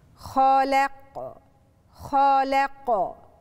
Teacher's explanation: خالق خالق، وبعدين بعد اللام هدخل على قلقلة، لازم يحصل اضطراب في نطق حرف القاف الساكنة عندي عشان تبان، لو أنا لم أقلقل الحرف مش هيظهر معاي.